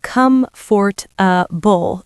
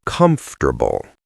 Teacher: In American English, we engage the schwah and the stress. It becomes three syllables.